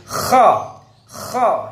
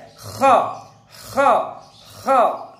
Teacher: Jadi isti'la itu lidah naik yang nanti akan berakibat kho termasuk huruf tafkhim, huruf yang tebal. Tebal secara suara ya. · makhrajnya kho ini puncak tenggorokan atau bahasa tajwidnya adnal halqi. Jadi tenggorokan yang paling atas, puncak tenggorokan.